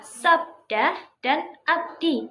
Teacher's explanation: Pada kata-kata tersebut, konsonan terlihat berdampingan tetapi pengucapannya tetap dipisahkan oleh pergantian suku kata. Jadi inti dari deretonem adalah bunyi-bunyi yang berdekatan tetapi tidak berada dalam satu suku kata yang sama. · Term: Deret konsonan